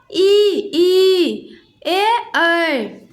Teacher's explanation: जिन स्वरों के उच्चारण में जीभ का आगे का हिस्सा उठता है अग्रस्वर कहलाता है